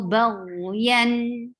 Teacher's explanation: Ghain is heavy, but ghain has rakhawa. The sound should flow.